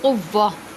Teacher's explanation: تنوین کو ہاں میں بدل دیں گے